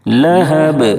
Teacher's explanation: سيصلى نارا ذات لهب اب جب یہاں پر ہم وقف کریں گے تو با ساکن ہو جائے گی، یعنی دو زیر کے جو تنوین ہے وہ جزم سے بدل جائے گی، اور اس صورت میں با میں قلقلہ ہوگا، کیونکہ حروف قلقلہ جب ساکن ہوتے ہیں تبھی ان میں آواز لوٹتی ہے